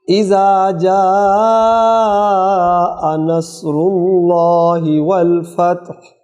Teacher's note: مخرج ہا کا حلق سے ہے اور اس کو ہم نے ساکن کرنا ہے وقف کی وجہ سے، لہذا حلق سے آواز آئے